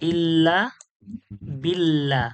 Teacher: আছে তো তাহলে এটাই তো আল্লাহর লাম কিন্তু পাতলা কেন হচ্ছে আল্লাহর লামের পূর্বে যখন জের আছে আল্লাহর লামটা বারিক বা পাতলা করে পড়তে হয়